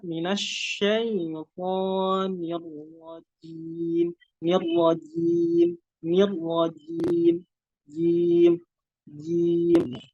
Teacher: kalau huruf jim ini bagian tengah itu nempel ke langit-langit mulut di atas. Jadi nggak ada udara yang keluar